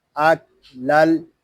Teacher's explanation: ہم تنوین کو لام کے ساتھ ملا دیں گے، یہاں الف جو ہے یہ زائد ہے، یہ الف نہیں پڑھا جا رہا. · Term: ادغام